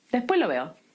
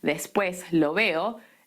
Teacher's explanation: estoy hablando rápido porque estoy aspirando la S, después lo veo y estoy agrupando las palabras.